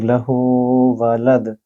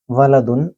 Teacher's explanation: د یہاں تھوڑا گونجنے کی آواز ہوگی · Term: قلقلہ